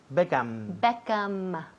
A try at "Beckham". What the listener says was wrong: Todo el mundo aquí dice Beckham con la boca abierta. Beckham, pues cierra. Beckham, M.